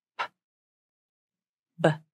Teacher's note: These consonants are called stop consonants, which means the airflow is stopped somewhere along the vocal tract as you pronounce them. For the P and B consonants, the airflow is stopped where the lips come together. Then the air is released as you open the mouth. P, b. But where they differ is voicing.